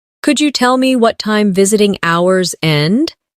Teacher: In connected speech, could you becomes could ya?